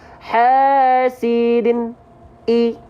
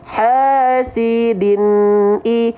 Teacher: Jadi artinya sedikit mengalir. Hasidin i, tanpa mantul, tanpa putus. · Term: nun sukun